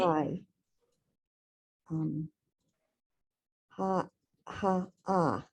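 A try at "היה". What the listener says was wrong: so the yud actually sounds like a Y here, and it starts with a hey sound.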